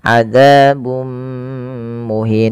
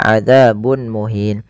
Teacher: cara membacanya memasukkan tanwinnya kepada mim dan ditahan adzabum muhin tidak dibaca adzabun muhin. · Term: idgham bighunah